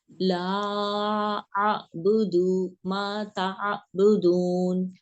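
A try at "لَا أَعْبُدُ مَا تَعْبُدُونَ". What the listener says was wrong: تھوڑا سا آپ کی حمزہ کی مجھے آواز آ رہی ہے آئین کی بجائے، کیونکہ جب آپ حمزہ کے مخرج پہ چلے جاتے ہیں نا تو آئین کی آواز، کیونکہ وہ رکتا ہے نا، رکتا نہیں ہے آواز.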